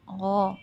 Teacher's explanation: غائن جو ہے وہ پر حرف ہے، ہیوی لیٹر ہے، زبان کی جڑ کو اوپر لگائیں، تالو سے لگائیں. غو، غافلون نہیں پڑھنا، عام ڈھیلا ڈھالا نہیں، تجوید ہے.